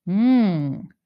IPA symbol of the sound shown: ŋ